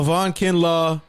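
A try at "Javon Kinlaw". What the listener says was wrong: you're just not pronounce the J in his name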